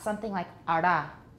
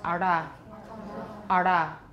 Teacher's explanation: for a flap, it's usually retroflex, which means your tongue is curled inside, right? And then you uncurl your tongue and hit something, usually your alveolar ridge, and that's a flap.